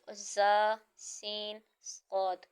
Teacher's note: ان کو ادا کرتے وقت سیٹی کی طرح تیز آواز نکلتی ہے